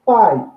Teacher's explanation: o ditongo aqui é um ditongo decrescente, formado por uma vogal som longo, seguido de uma vogal som breve